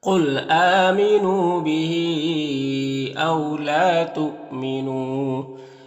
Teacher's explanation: یہاں پر واو لین ہے، لام الف مدہ ہے. یہاں پر حمزہ ساکنہ ہے تو جھٹکا لگے گا، واو کی شکل میں ہے. نون میں واو مدہ ہے، ایک الف کے برابر کھینچیں گے اس طرح سے.